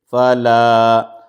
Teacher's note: الف مدہ ہے، الف سے پہلے زبر ہے، کو مد اصلی ہے، اس کو تھوڑا 2 حرکت کے برابر اس کو کھینچ کے پڑھیں گے